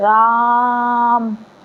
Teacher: राम पूरा खींच दिए तो उसमें तीन से अधिक मात्रा का समय लग गया।